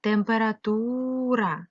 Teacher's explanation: звук е у вимові наближається до и